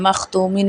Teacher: میم زبر خا مخ، تا پیش واؤ تو، میم دو زیر من، مختومن میں اظہار ہوگا، خا حروف خلقی میں سے ہے.